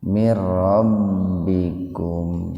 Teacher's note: Yang tadi idgham bigunnah, yang ini idgham bila guna. Jadi dimasukkan ke huruf ro tanpa mendengung.